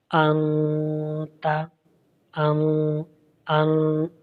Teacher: زبان کو ہلکا سا اوپر کی طرف اٹھاتے ہیں، ٹچ نہیں کرتے ہیں بالکل اچھی طرح، جسٹ ہم تھوڑا سا زبان کو تالو کی طرف اٹھا کر ہم آواز کو پھر ناک میں لے کر جاتے ہیں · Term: غنہ